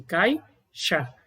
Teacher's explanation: Então, se sobrou essas duas letras, letra A e letra I, na sílaba, uma delas exercerá o papel de núcleo da sílaba, no caso a letra A, e a segunda será semivogal, pois a pronúncia dela é encurtada, é mais breve